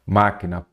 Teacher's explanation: proparoxítona porque a sílaba tônica é a antepenúltima